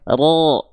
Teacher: ketika huruf ro berharakat fathah dia harus dibaca dengan keadaan yang tebal ya